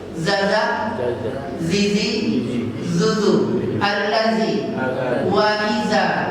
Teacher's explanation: Jadi za itu keluarnya dari ujung lidah dikenakan ke ujung gigi seri atas.